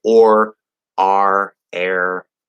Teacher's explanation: American English is rhoticized, which is just a fancy term meaning we pronounce all of our R's. Okay, so we say or, R, air, in addition to the consonant like run.